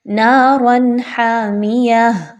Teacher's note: را کے اوپر دو زبر ہے تو آپ نے اس کو پر کر کے پڑھنا ہے، باریک نہیں پڑھنا